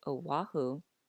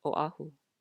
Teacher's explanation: if we don't pronounce the okina the vowels will glide together when there really should be a separation of the vowel